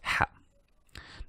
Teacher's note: be careful of the ha. This is a middle throat.